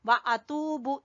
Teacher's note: ता को खींचना है आपने वाव मद्दा की वजह से